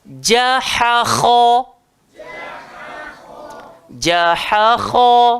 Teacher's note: Kha keluar dekat atas. Tekak. Batang tekak paling atas.